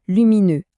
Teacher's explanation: avec le son e à la fin, la bouche un peu arrondie